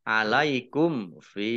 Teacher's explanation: mim sukun bertemu dengan huruf fa, bacaan idhar syafawi dibaca jelas